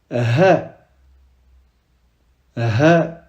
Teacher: Mim mim noun noun ici c'est comme si on soupirait d'accord ? On sort pas de l'air de la gorge comme le ha mais c'est plutôt comme si on était à bout de souffle.